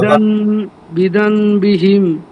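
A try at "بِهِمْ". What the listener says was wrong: আবারও কিন্তু আপনার নুন আসছে। বিজাম বিহিম, এখানে মিম দ্বারা পরিবর্তন করবেন। বিহিম। হ্যাঁ, এখানে নুন আসবে কেন?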